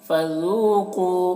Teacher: ज़ाल को बारीक, कौफ को मोटा करके।